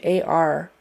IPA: ɑr